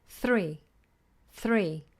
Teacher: to the r throw throw now this is an occasion where it sounds like we have a tapping R because the tongue touches the teeth as it comes through to the our position three three but